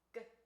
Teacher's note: So our next set of plosive cognate pairs are velar And velar means they're made on the velum, which is your soft palate. So these next two sounds are made when the back of your tongue meets your soft palate, and then it explodes the air. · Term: velar plosives